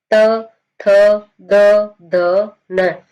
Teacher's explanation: तो आपकी जो जीवा है, आपकी जो जुबान है, वो कहां से जाकर लगती है, दंत से जाकर लगती है, दांतों से जाकर लगती है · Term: दंत्य